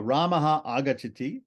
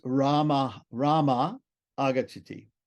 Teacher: So then the Sandhi rule makes the Visarga disappear. Nothing else changes. The Visarga just drops. And so Ramaha agachati becomes Rama agachati.